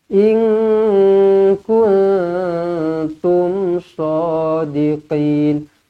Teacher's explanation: nun kosong bertemu kaf dan nun kosong bertemu ta. Kedua-duanya ikhfa hakiki, didengungkan dua harakat